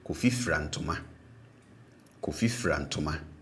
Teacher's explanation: it doesn't matter whether it's a single syllable verb or more than a single syllable verb, you still pronounce all the syllables with a low tone